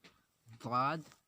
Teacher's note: کنارہ زبان ڈاڑھ سے مل کر ضاد ادا ہوتا ہے۔